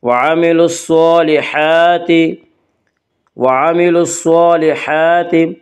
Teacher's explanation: صاد کے اوپر اور ہا کے اوپر کھڑا زبر ہے، کھڑا زبر کو 1 الف کے برابر کھینچ کر پڑھیں گے